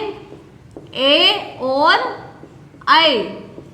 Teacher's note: ए और ऐ ये दो वर्ण कंठ और तालु, इन दोनों के उच्चारण स्थानों को मिलाकर ए और ऐ बोला जाएगा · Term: कंठ तालु